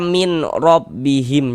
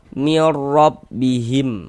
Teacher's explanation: Sehingga dibaca pendek, tidak ditahan suaranya, dibaca pendek saja. Ini bunyi nun sukunnya dia masuk ke dalam huruf ro, maka kita baca mir. Jangan dibaca min rabbihim, jangan, tapi dibaca mir rabbihim kayak gitu. · Jadi bunyi nun sukun atau bunyi tanwinnya dimasukkan ke dalam huruf idgham bila gunnahnya. Kemudian dia tidak digunnahkan, tidak didengungkan, dimasukkan saja tapi jangan didengungkan. Sehingga dibaca pendek, tidak ditahan suaranya, dibaca pendek saja.